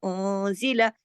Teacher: لام کے اوپر زبر ہے، ایک حرکت کھینچے گا، زیادہ نہیں کھینچنا، اس کو جتنا لکھا اتنا ہی پڑے گا.